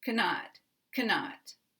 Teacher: And if we say cannot, 2 syllables, then the first syllable is going to be weak, and the negative second syllable is going to be stressed, strong.